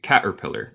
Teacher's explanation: también se puede hacer un glottal stop como los británicos